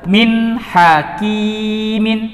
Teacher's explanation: Artinya ketika ada nun sukun atau tanwin bertemu dengan salah satu huruf izhar yang 6, yaitu hamzah, ha, kha, ain, ghin, dan ha besar atau ha, maka nun tersebut atau tanwin dibaca jelas, tidak boleh dibaca dengung atau samar-samar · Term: izhar halqi